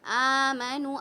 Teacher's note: آمنوا میں آپ دیکھ لیں آ کو ہم کھینچ رہے ہیں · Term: کھڑا زبر